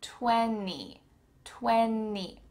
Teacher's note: It's gone. So we need to pronounce this word without the T.